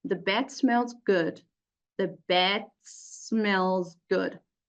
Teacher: the D loses its voicing and changes into the voiceless